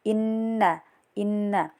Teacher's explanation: Kemudian masih pada ayat keempat terdapat ee hukum gunah karena terdapat nun bertasjid dibaca dengung tiga harakat juga